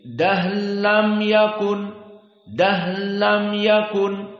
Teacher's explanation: diidghamkan ra fil lam, diidghamkan ra pada lam. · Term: idgham al-kabir